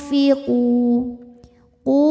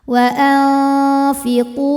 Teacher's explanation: karena ada wau mati didahului harakat damah maka panjang dua harakat